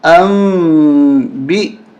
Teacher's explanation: یہاں پر بھی اقلاب کا قانون لگ رہا ہے. نون ساکن کے بعد با آ رہی ہے، نون کو بدل دیں گے چھوٹی میم کے ساتھ.